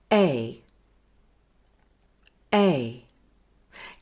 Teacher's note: Now join E and I smoothly so they become just one syllable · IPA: /eɪ/